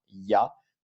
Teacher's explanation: C'est-à-dire qu'on va avoir un espèce de I, de yi avant la voyelle.